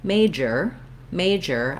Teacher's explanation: i want to make sure i have that air stopping and pushing out in the j sound in the middle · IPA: /ˈmeɪdʒər/, /dʒ/